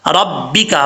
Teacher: را کے اوپر زبر ہے، را پر پڑھا جائے گا، اور کاف بریک ہے، اس کو موٹا نہیں پڑھنا